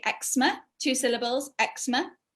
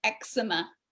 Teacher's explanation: in british english we say eczema two syllables eczema and in the recording the guy was american and he called it eczema which is three syllables